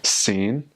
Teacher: my last name in Chinese is Xin, which is mid-rising